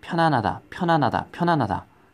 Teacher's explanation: 여린이읒은 소리가 어떻게 되냐면 편안하다를 여러분들이 발음하면은 사실 이 편하고 안 사이에 아주 미세하게 히읗 발음이 살짝 나요.